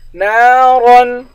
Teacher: نون کے بعد الف ہے، الف حروف مدہ ہے، اس کو بھی ایک الف کے مقدار کھینچ کر پڑھیں گے. را موٹے حروف میں سے ہے، را کو موٹا پڑھیں گے.